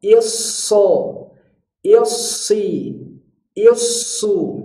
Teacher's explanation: tasdidnya munculkan sofirnya 2 kali lipat